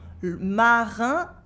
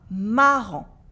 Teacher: In le marin, it is a un sound, an un sound, and marrant, it is a en sound with a silent T. En, marin, marrant.